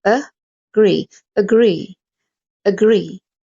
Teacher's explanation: with the short clipped schwa sound